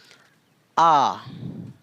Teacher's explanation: लग रहा है कि उससे दुगुना टाइम लग रहा है लगभग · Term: दीर्घ स्वर